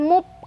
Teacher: Kalau mup bibir ketemu bibir. Kalau muf fa yang seharusnya bibir bawah bagian dalam ketemunya sama gigi atas ya.